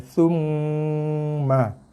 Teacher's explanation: dengung pada mim dengan tekan pada kedua-dua belah bibir atas bawah